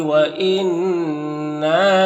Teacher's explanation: ان میں نون مشدد غنہ ہوگا، الف مدہ ایک الف کے برابر کھینچیں گے